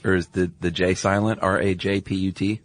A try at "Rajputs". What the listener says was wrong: No, it's like Maharaja. So Rajputs, maybe?